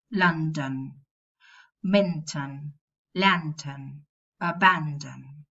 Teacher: And when you've got clusters formed by nasal plus plosive plus nasal, for example, London, nasal plus a plosive. Now, it's not common to find nasal plus plosive and then another nasal. You will pronounce a vowel there.